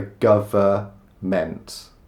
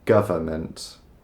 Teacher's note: We don't pronounce the N, it's just government.